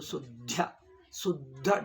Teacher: double ದ ಒತ್ತಿ ಹೇಳಬೇಕು